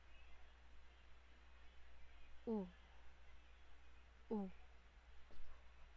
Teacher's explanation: Ang U naman ay mataas at likod ng dila